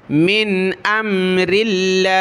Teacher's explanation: ज़ेर है तो लफ्ज़ अल्लाह को बारीक पढ़ा